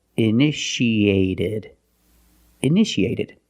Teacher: the second T is between vowels so we pronounce it like a fast D